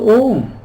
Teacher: Now A, U, the sound of U, and M, Now in Sanskrit, the sounds A and U combined, they make the sound O